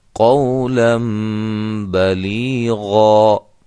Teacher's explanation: اسی طرح یہ دیکھیں آخر میں اس کو ہم الف مدہ بنا دیں گے، 2 زبروں کو ختم کر دیں گے، 1 زبر رہنے دیں گے اور 1 الف کے برابر اس کو ہم لمبا کر کے وقف کریں گے